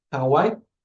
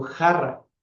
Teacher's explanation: la letra H sí se pronunciaba, pero con una aspiración menor o con una pronunciación menor, similar a la J, pero más débil.